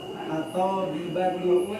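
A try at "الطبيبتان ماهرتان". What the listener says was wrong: Mana kok jadi atoknya yang panjang?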